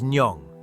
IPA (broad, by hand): njəŋ